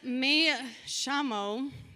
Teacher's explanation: in Argentina, people say, when they say the double L's and the Y, it makes a sh sound, which would explain why I was hearing a lot of sh happening.